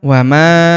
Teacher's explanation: Huruf ma kita panjangkan 4 atau 5 harokat karena di depan huruf ma terdapat alif yang di atasnya terdapat tanda garis bacaan panjang.